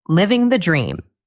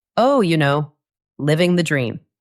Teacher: If you are having a long, boring day at work, and you are very tired, and your friend asks how you are, you might say with a flat, tired voice and a little smile, "Oh, living the dream." In this case, it means the exact opposite.